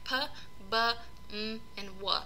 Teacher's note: bilabial, labial is lips, it just means that both lips come together. These are sounds like p, b, m, and w.